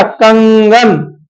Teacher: ये अनुस्वार भी देखो नाक से ज्यादा बोला जाता है। जैसे अब देखो अंगा को बोलना है कंगन, अंगा कम बोल रहे हो लेकिन नाक से ज्यादा कंगन, नाक से ज्यादा बोल रहे हो ना, तो अनुस्वार को नाक से ज्यादा बोला जाता है और मुख से।